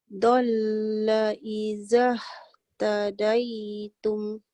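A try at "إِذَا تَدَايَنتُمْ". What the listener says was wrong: Jadi kita lihat kat sini, iza yang pertama ni baca panjang. Yang kat sini, iza yang kedua, dia tak panjang pasal nak terus masuk dekat ha dia. Dalla izah tadaitum. Dalla izah tadaitum.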